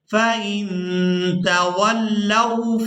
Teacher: لام کو واو ساکن کے ساتھ ملاتے ہوئے کھینچ کر ادا نہیں کرنا بلکہ اس کو نرمی کے ساتھ ادا کریں گے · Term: واو لین